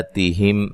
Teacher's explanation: میم ساکن کا اظہار ہے، غنہ نہیں کریں گے